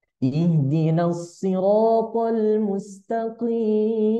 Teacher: kita pakai nada naik Dengan lurus ya naik plus lurus